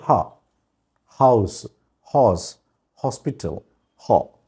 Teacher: ఇవన్నీ వాయిస్డ్ అయితే ఇది ఒక్కటే వాయిస్లెస్, హా అనేది. ఎందుకని హా వైబ్రేషన్ ఉండదు. హా వోకల్ కార్డ్ క్లోజ్ అవుతే ఆ ఎయిర్ తంతుంటే వైబ్రేషన్ వస్తుంది, కానీ ఇక్కడ వోకల్ కార్డ్ క్లోజ్ అవ్వదు.